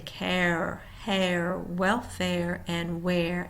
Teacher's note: starts with open mouth, rounded tongue, then mouth and tongue relax on second sound